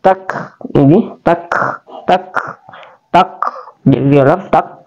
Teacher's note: Ta ini dia adalah huruf tarful lisan atau ujung lidah.